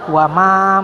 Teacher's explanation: Wama ma-nya panjang 4 sampai 6 harokat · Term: mat jaiz munfasil